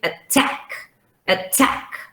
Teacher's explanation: the first one is a schwa because it's on unstressed syllable. See, and the second one is attack.